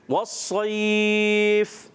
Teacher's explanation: वस्सैफ सौद को पुर करते हुए और फिर यालीन को हम क्या करेंगे, बग़ैर खींचे अदा करेंगे, ठीक है। और आखिर में हम इस पर वस्सैफ पर जब यहाँ रुकेंगे तो क्या करेंगे, थोड़ा सा लंबा करेंगे, यानी मद करेंगे।